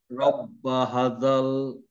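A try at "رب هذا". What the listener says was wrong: হাতে একটা টান হবে স্যার, যদিও এখানে দেওয়া নাই। হাতে একটা টান হবে, হ্যাঁ, খাড়া জবর দিয়ে।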